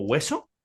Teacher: en el caso de hueso, parece más como un sonido W, como hueso,